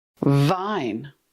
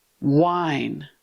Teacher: VV teeth plus lip. VV W. Rounded lips. Rounded lips. No teeth.